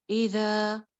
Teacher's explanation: ایک الف لمبا ذال بغیر سیٹی کے